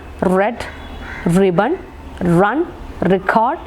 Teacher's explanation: The tip of the tongue is against the part which is just above alveola or just after the alveolar ridge, but there is no direct contact or there is no contact. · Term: post alveolar sound